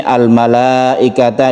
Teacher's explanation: ada mad wajib muttasil yang kita panjangkan dua setengah Alif